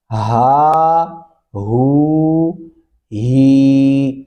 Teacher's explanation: اس کو موٹا پڑھنا ہے آپ نے، ہا ہو ہی، سینے سے بھاری آواز نکلتی ہے